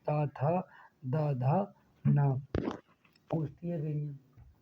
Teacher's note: जिन वर्णों का उच्चारण करते समय जीभ का अग्रभाग हमारे ऊपर के दांतों को स्पर्श करता है उन्हें दंतीय व्यंजन कहते हैं